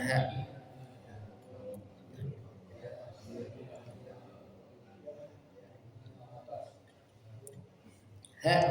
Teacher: jadi tenggorokan paling bawah keluar huruf ha yang dia memiliki sifat satu apa sifatnya naas mengalir halir bisa